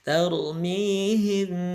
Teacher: Mimnya ingat gunah itu dengung, dia ditahan di rongga hidung ya selama 2 ketukan saja. Tarmihim, dan dia diberi warna hijau ya, menunjukkan dia samar membacanya.